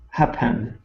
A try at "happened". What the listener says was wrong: your ed sounds good but we don't want to say hap bend it's happen okay we're going to go right to the end so we're going to skip over the vowel